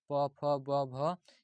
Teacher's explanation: प के जितने भी वर्ग हैं प फ ब भ यह जो है ओष्ठ से आवाज आता है।